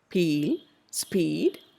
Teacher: But in peel, you notice that there is obviously a lip spread. P takes a lip spread position. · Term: lip spread consonant